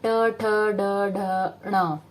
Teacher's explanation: मूर्धा, मूर्धा इज जो आपका ट वर्ग है, ट में जो आपकी जीभ है फटाक से ऊपर वो छप्पा मारती है और वापस आती है